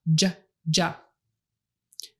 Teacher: the J sound is just an SH that you stop by pushing your tongue hard up against the top of your mouth so that only a little bit of air can escape at a time.